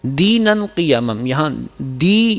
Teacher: یہاں یا پہ حمزہ کی آواز سنائی دی ہے، دی تو حمزہ نہیں ہونا چاہیے، خالصتاً یا ادا ہونی چاہیے۔